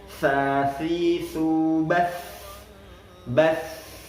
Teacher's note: ketika ta-nya berharokat sukun, kita alirkan, jangan langsung kita matikan.